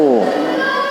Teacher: U monyong dah, u. Kalau kita ndak mau monyong ya kurang.